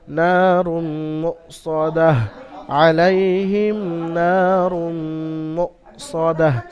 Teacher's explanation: মিম মুসাদ্দাদ হওয়ার কারণে গুন্না হবে, ওয়াজিব গুন্না